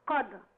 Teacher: قد برضك في قلقلة في الدال